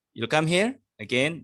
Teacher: You'll come here again. You raise your tone to say that you are asking a question.